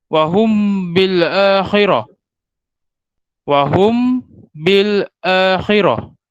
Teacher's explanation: Cuma perbezaannya kalau kita tengok dari segi huruf dia, untuk ikhfa syafawi ini apabila mim mati ini dia bertemu dengan huruf ba, maka bacaannya kita rapatkan kita punya bibir dengan dengung 2 harakat.